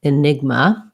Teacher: Yeah, I think maybe you just accidentally left off your A. So in enigma, we have second syllable stress.